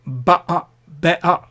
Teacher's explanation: So better is be'a and butter is ba'a. So that there's a glottal stop in between, and that glottal stop is how they pronounce.